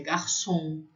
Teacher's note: O O nasalado, que é o O sozinho, que é garçom